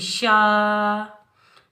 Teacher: شین کی آواز پھیلتی ہوئی محسوس ہوتی ہے ، شین کے اوپر کھڑی حرکات میں سے کھڑا زبر آ · شین کے اوپر کھڑی حرکات میں سے کھڑا زبر آ رہا ہے تو اس کو ہم ایک الف کی مقدار میں اوپر کی جانب کھینچ کر ادا کریں گے